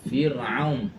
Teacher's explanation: Ra mati sebelumnya baris baris bawah kena baca dengan nipis.